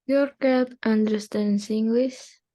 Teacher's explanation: Hanya mengulangi kalimat yang sama tapi dengan intonasi yang naik.